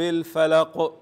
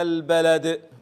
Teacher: اخر كلمه عند الوقف بتكون قلقله كبرى شديده في اخر الكلمه عند الوقف